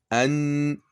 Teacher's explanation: le bout de la langue est simplement en appui sur le palais dur, toujours à proximité des incisives supérieures. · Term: Noun